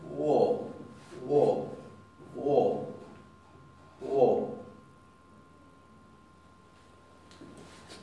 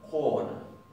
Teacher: la O del islandés se va a pronunciar con una chiquitita U adelante